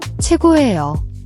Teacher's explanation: The vowel in, choego, is a diphthong that sounds like we in English, as in wet. Many learners simplify it to O or E.